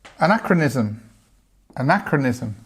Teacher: because we have this stress on the second syllable, we have this schwa